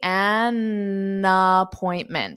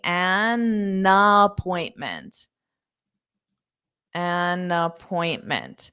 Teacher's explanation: So you're using that N to also connect onto the word appointment.